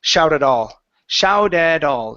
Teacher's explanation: both of those t's should turn to Flap T's because there's a vowel after each of them